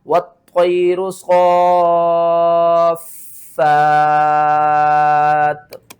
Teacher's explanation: دو زیر کو آپ نے ختم کرنا ہے، تا کو ساکن کرنا ہے، اس سے پہلے دیکھیں تو فا ہے، فا کو کھینچ کر تا کے ساتھ ملانا ہے